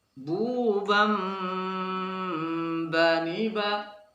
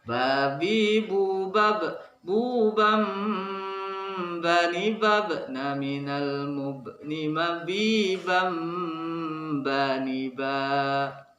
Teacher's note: Maka seakan-akan membunyikan suara nun mati atau tanwin itu dengan suara m. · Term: iqlab